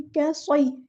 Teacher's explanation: कैसॉय, काफ़ बारीक, स्वाद हैवी, या बारीक लाइट लेटर। तो दरमियान में मिड में एक हैवी लेटर है और दोनों साइड पे लाइट लेटर्स हैं, बारीक लेटर्स हैं